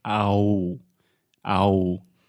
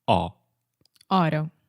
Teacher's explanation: When we have an A-U combination, the letters A-U, the natural tendency of Portuguese speakers is to say ow, ow. So you are separating these two sounds. You don't need to. Normally in English, we just say aw. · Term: just one sound, aw